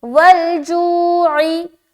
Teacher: آگے والجوعی، واو لام زبر ول، جیم واو پیش جو، والجو، جو میں واو مدہ کر رہے لہٰذا کھینچیں گے، والجوعی، عین زیر عی۔